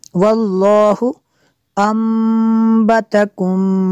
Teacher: تنوین کے بعد با ہو تو وہاں پہ اقلاب ہوتا ہے، جو نون ساکن ہوتا ہے اس کو میم سے بدل کر پڑھتے ہیں اور غنہ بھی کرتے ہیں